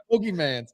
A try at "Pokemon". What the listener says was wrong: Pokemon. It's Pokemon. There's no S. There's no S.